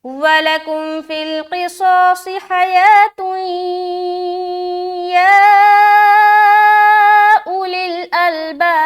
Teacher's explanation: दो पेश की तनवीन के बाद हर्फ या आ रहा है, लिहाजा यहाँ पर इदगाम करेंगे, वो भी इदगाम नाक़िस, यानी कि गुन्ने के साथ इदगाम करना है। यहाँ पर हमें गुन्ना करना है और गुन्ने की मकदार क्या है, एक अलिफ है, तो एक अलिफ की मकदार हम यहाँ पर नून की जो आवाज़ उसको या से मिलाते हुए रुकेंगे, एक अलिफ की मकदार।